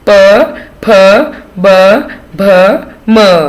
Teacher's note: ये जो प वर्ग है इसमें दोनों होठों को मिलाना पड़ता है